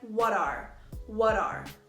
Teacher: you doing what are you doing so we can hear that what ends with a T sound which is a consonant then the next word is R which starts with a vowel sound these sounds naturally become linked to sound less like what are and more like what are